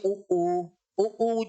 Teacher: ओष्ठ की आकृति गोल हो जाती है